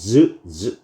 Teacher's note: 치어이 녀석들은 파열된 후에 마찰을 일으키죠 즈즈 이런 식으로 그래서 파찰음 파열된 뒤에 마찰을 일으킨다 파찰음이라고 하는 녀석입니다 · 파열된 후에 마찰을 일으키죠. 즈 이런 식으로.